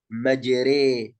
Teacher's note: طيب الراء الخامسة أو الراء الأخيرة من حالات الترقيق هي الراء الممالة، يعني وهي يعني كلمة واحدة فقط في القرآن في رواية حفص عن عاصم في سورة هود، وقال اركبوا فيها بسم الله مجريها ومرساها، مجري. فهذه الراء الممالة في رواية حفص عن عاصم هذه يعني راء تكون مرققة